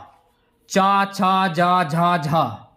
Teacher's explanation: चा छ ज झ और य ये होते हैं तालू से